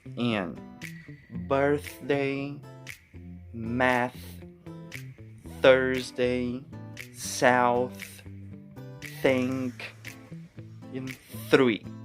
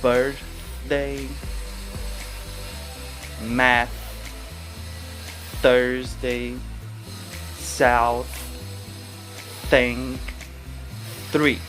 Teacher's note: note that no vibration in the vocal cords no vibration in your throat only air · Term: th unvoiced